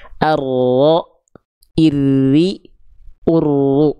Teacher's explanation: Jadi dia disimpangkan makhrajnya tadinya nempel ke langit-langit depan didorong ke dalam. · Jadi huruf ro itu asalnya ujung lidahnya nempel ke langit-langit bagian depan. Nah, ketika dilafalkan dia agak diseret ke dalam. Ro agak diseret, disimpangkan makhrajnya ke arah dalam. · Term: sifat inhiraf, sifat inhirof